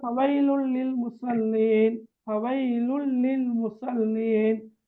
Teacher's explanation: இணைத்து குன்னா இல்லாமல் ஓதணும். எஸ், இணைத்து உண்ணா இல்லாமல் ஓதணும்.